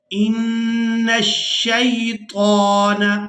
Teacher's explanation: یہاں نون مشدد پر غنہ کریں گے، آواز ناک میں جائے گی اور اس آواز کو کچھ دیر ناک میں روک کر رکھیں گے۔ اس کے بعد شین مشدد ہے تو اس کو ہم نے سختی کے ساتھ ادا کرنا ہے، کیونکہ اگر کسی حرف پر شد ہو تو وہ سختی کے ساتھ ہی ادا ہوتا ہے۔